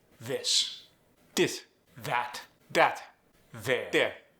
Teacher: The voice TH becomes a D.